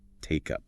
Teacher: Very common in natural speech, that assimilation. And how the K sound at the end of take links smoothly onto the U of take up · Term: consonant vowel linking